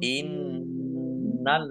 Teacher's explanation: Nun tasdid dibaca gunah atau mendengung ditahan biar tampak dengungannya inallina lamnya dibaca dobel tasdidnya